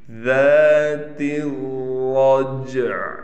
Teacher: والسماء ذات الرجع، تا کو ہم ڈائریکٹ اس را سے ملائیں گے، را پر تشدید ہونے کی وجہ سے ٹھہراؤ بھی کیا جائے گا، را کو موٹا بھی پڑھیں گے، جیم پر قلقلہ کیا جائے گا۔ · عین کو ہم نے ختم نہیں کرنا، عین کا تہائی حصہ یعنی 3 حصے ہم عین کے نکالیں گے، یعنی ہلکا سا عین لازمی نکلے گا وقف میں۔ ذات الرجع، عین کو ہم نے وقف میں نکالنا ہے۔